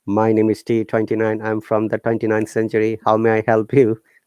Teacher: another one is monotonous that goes straight like robots speak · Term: robotic tone